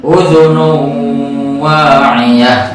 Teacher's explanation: idgham bi gunnah, juga sama tanwin dhamma bertemu dengan huruf waw dan ditahan 2 harokat.